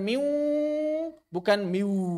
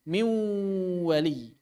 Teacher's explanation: bunyi wau dan bunyi nun terjadi secara bersamaan;